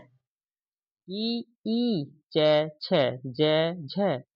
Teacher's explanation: दोस्तों ई च छ झ आदि का उच्चारण हमारे तालव्य से होता है